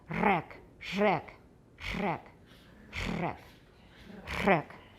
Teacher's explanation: alveolar fricative trill and this is in check so it's a it's a regular alveolar trill but it's fricative so we've got more noise in there so it's like wreck wreck wreck crack you got friction in